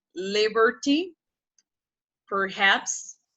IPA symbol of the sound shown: ər